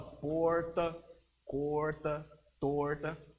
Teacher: O R do inglês, ele é um R retroflexo. Ele faz aquela curva lá na língua. É como se fosse o R do paulista.